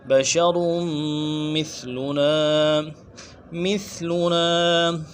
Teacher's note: بشر میں را کو میم کے ساتھ ملائیں گے، تشدید ہے